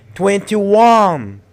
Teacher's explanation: you have to stress one make it longer and louder